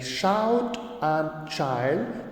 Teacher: So example of the palatals are the initial sounds in the words shout and child. So we have sound like sh and we have sound like ch, like shout and child, which are both voiceless. Now the sound sh sound is represented as sh and the ch sound is represented as ch, ch. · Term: palatal sound